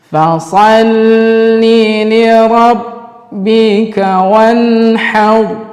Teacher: Nun bertemu dengan ha, maka kita baca izhar halqi, artinya jelas di dalam tenggorokan